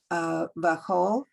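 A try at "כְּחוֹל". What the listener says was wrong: Careful, it's not a bet. No, it's not a bet. It doesn't have a backside, so that makes it a ka. Kechol, because see the vowel is large.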